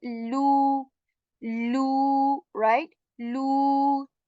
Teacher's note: I'm stretching the sound for two counts here of lu, the double O kind of sound, oo, lu, right? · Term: waw madda